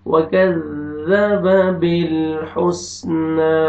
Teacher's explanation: کاف کو باریک پڑھیں گے اور زال کو نرمی سے ادا کر کے پڑھیں گے